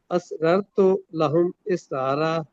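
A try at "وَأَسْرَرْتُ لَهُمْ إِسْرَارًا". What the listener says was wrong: واؤ بھی پڑھ.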